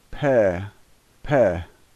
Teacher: it's like two lips coming together pair pair that is the Russian P sound